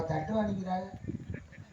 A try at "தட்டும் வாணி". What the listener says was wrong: ஏன்னா அந்த உச்சரிப்பே தவறான உச்சரிப்பு. தட்டுவாணிங்கிறது வார்த்தை கிடையாது. தட்டும் வாணி அப்படிங்கறத வார்த்தை. சொல்லும் போது தட்டும் வாணி.